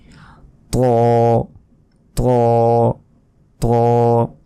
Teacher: বাংলায় যে এমনি ত রয়েছে এর মতো উচ্চারণ হবে না, এটা আরও মোটাভাবে উচ্চারণ হবে।